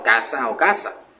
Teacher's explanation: Ahí podríamos colocar un ejemplo como casa y caza, con Z, pero el guajiro lo pronuncia igual, casa o casa. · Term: saseo